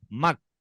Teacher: मीम को ये जबर काफ में जाके मिला दे रहा है, मक।